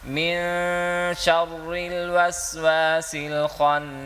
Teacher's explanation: اخفا ہو رہا ہے، یعنی جہاں پر ہم غنہ کرتے ہیں